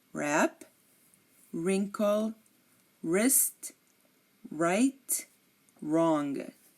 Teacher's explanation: always silent like in these words wrap wrinkle wrist right wrong you are not hearing the W in any of these words